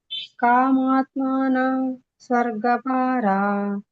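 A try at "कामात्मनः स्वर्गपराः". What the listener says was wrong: ಇಲ್ಲಿ ನೀವು ಸ್ವರ್ಗ ಪರ ಹೇಳುವಾಗ ಸ್ವರ್ಗ ಪರಾಹ ಅಂತ ಹೇಳಬೇಕು ಒಂದು ಇಲ್ಲಂದ್ರೆ ಸ್ವರ್ಗ ಪರಹ ಸ್ವಲ್ಪ ಹ ಉಚ್ಚಾರಣೆ ಆಗಬೇಕು ಅಲ್ಲಿ ನಿಮ್ದು ಹ ಉಚ್ಚಾರಣೆ ಆಗಲಿಲ್ಲ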